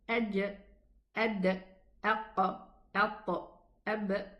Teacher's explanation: When the makhraj opens, the makhraj of these 5 letters opens, there will be a qalqala sound.